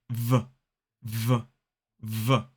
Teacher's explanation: You should feel in your throat a vibration. This is because we are using our vocal cords to make this sound. So v is voiced.